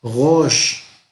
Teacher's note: Pero la R hebrea normalmente es como gutural. Entonces no es rosh, no, es como medio afrancesada.